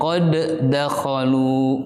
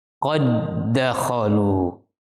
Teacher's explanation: meleburkan huruf dal yang pertama kepada dal yang kedua, sehingga yang terdengar adalah satu bunyi suara dal. Tidak boleh kita membaca qalqalah pada huruf dal yang pertama.